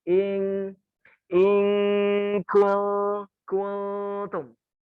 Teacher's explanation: Ketika nun sukun bertemu kaf, ing, hurufnya eng asli, ng asli, ing. Tapi ketika nun sukun bertemu ta, bukan ng asli, tapi agak dimasukkan ke dalam hidung. Ing kultum, ing kultum, pasti beda. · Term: ikhfa hakiki